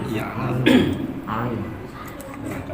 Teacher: pertemuan antara ujung lidah itu dengan dinding itulah menghasilkan huruf ain. Karena huruf itu tidak akan bisa keluar kecuali pertemuan dua sisi.